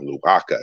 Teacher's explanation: it's not nasalized, so it's just a strong K